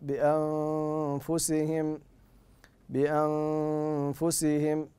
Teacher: بعدها حرف الفاء والفاء من حروف الاخفاء والفاء من حروف الاخفاء فلا بد من اختفاء النون الساكنه عند النطق بها اذا التقت مع حرف الفاء